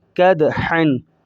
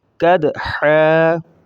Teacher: اور اینڈ کے اندر 2 زبریں آ چکی ہیں، تو وقف کے بعد ایک الف کے بقدر حا کو کھینچا جائے گا